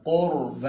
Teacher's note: قاف کو موٹا، را کو بھی موٹا